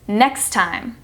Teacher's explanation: It sounds like there's only one T, N-E-X-T-I-M-E, as one word